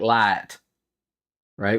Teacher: it would probably come out more like L right where the the a is extended before it hits the I